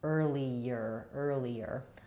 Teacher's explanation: That's because I link from the E to the and I have vowel to vowel linking there. So I'm going to end up with a little little y sound linking those.